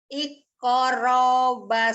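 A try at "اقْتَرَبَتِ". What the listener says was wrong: Bukan ikoro, bukan ikoro. Iqtaro. Iqtarobatis.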